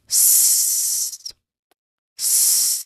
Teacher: So this is a hissing sound. Did your throat vibrates? Of course not. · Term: voiceless sound